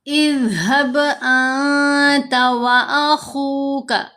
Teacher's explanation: اذهب انت واخوک، خا کو بھی موٹا پڑھیں گے، حروف مستعلیہ میں سے ہے، پیش کے بعد واو ساکن آ گئی، یہ واو مدہ ہے، اس واو کی وجہ سے ہم نے خا کی آواز کو 2 حرکات کی مقدار لمبا کیا